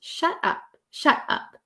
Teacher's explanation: there's like a breath in between and no T is pronounced